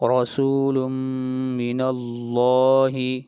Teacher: لفظ اللہ کو موٹا پڑھا جائے گا اس لیے کہ لفظ اللہ سے پہلے زبر آ رہی ہے